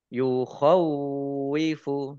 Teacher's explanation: Tok fathah berdiri mat tobi'i, yukhawwifu wawunya ada tasdidnya dibaca double